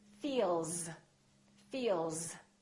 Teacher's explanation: Feel, vibration in my vocal cords. That's a voiced sound. Therefore, the S sounds like Z